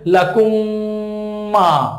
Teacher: মিম সাকিনের পরে যদি মিম আসে তাহলে মিম সাকিনকে পরের মিমের সাথে মিলিয়ে গুন্না করে পড়তে হবে, একালিফ পরিমাণ গুন্না করে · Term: মিম সাকিনের ইদগাম